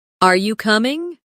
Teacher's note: when you ask a yes or no question, your voice usually rises at the end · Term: intonation